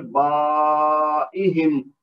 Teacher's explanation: یعنی با کے بعد جو الف ہے وہ ہے شرط مد، اور حمزہ جو ایہم میں جو شروع میں ہے نا حمزہ کے نیچے زیر لگی ہوئی، تو یہ بنا سبب مد، اور یہ چونکہ ایک ہی کلمہ میں دونوں چیزیں ہیں تو مد واجب کہلائے گی، اور اس کو 4 سے 6 حرکت تک کھینچ کر پڑھیں گے